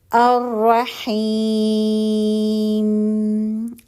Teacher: ٹھیک ہے, تو حرف مدہ آ رہا ہے, تو یہاں پہ جب ہم رکیں گے تو یہ مد عارض بنا کے ہم رک رہے ہیں